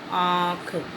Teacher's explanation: इसमें नाक से भी आवाज़ आती है और मुंह से भी बोला जाता है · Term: अनुनासिक